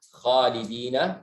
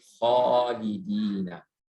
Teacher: kha itu termasuk huruf yang tafkhim. Jadi alifnya terikut tebal jadi khalidina